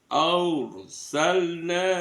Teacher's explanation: ro sukun sebelumnya ada fatkah dibaca ro tafkhim Arsalna di arsalna ada nun fatkah bertemu dengan alif mad thobi'i.